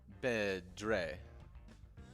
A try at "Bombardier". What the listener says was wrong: It's not Dre. It's D-I-E-R. it's D-I-E. With weird accents over each letter that mean specific,